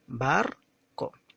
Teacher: Si nosotros pronunciamos esta palabrita, nos damos cuenta que tiene 2 sílabas y que justamente la primera ha sido pronunciada con mayor tonalidad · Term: sílaba tónica